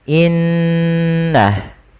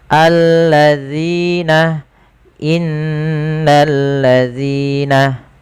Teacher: ada bacaan mat tabi'i, yaitu huruf zal dipanjangkan sepanjang 2 harokat